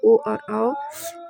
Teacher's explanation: कंठोष्ट से ओ और औ